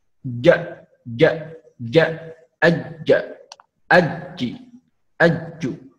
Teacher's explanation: Ja, ja. Jadi tidak keluar nafas ya, jahar, dia tidak keluar nafas, kemudian syiddah itu harus ditekan.